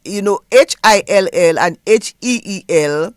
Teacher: HILL and HEEL, there's no difference because in Creole we only have the E, the long vowels